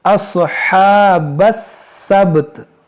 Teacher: बा साकिन है और यहाँ पर जब रुकेंगे तो ता को भी साकिन कर देंगे